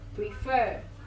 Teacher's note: the stress is obviously on the last syllable